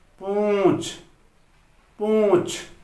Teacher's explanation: यहां पर च वर्ग का पंचम वर्ण आएगा, उसकी ध्वनि निकल रही है और नाक से हवा भी ज्यादा निकल रही है, तो यहां लगेगा अनुस्वार यानी कि बिंदी लगेगी।